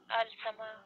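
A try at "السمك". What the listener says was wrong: ये रूफ शमसी है, आपने पढ़ा था ये सबक। ये अस समक हुआ है।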